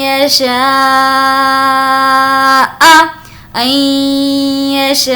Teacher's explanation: یہاں پر یا ہونے کی وجہ سے ہم نے غنہ کیا نون ساکن کے بعد